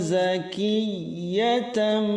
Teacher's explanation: San zakiyatam, zaki huruf zai jelas, kemudian ki tasydid huruf ya harus ada hentakannya, tetapi di tengah-tengah, tidak hilang ke atas